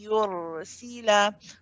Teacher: as the sound is traveling through your nose, you're pronouncing the ya as well. So you can feel yourself applying pressure at the ya makhraj.